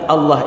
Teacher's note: Wah itu tipis sedangkan lafadz Allah ini tebal